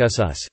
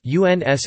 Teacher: Both English and Frisian are marked by the loss of the Germanic nasal